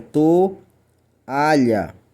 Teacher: Logo, você percebe que quando você lê a palavra toalha, você lê ela separadamente. Ou seja, nós vamos aqui possuir 3 sílabas, onde o O e o A ficam em sílabas diferentes. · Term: Hiato